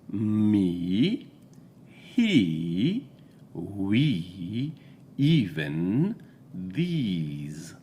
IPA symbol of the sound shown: iː